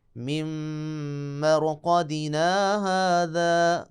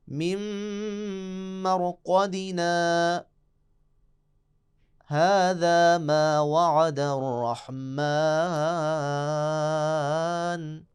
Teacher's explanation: سکتا یعنی رکنا بھی ہے اور سانس بھی نہیں توڑنا